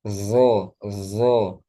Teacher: ujung ketemu ujung sama dengan zal dan sa. Bedanya zo tebal, zal tipis. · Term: huruf zo